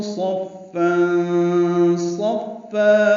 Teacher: صاد کو فا سے ملانا ہے، فا پر تنوین ہے دو زبر، اس کے بعد صاد آنے کی وجہ سے اخفا ہے